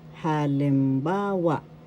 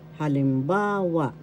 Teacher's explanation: The third syllable has the accent, so you pronounce this as halimbawa.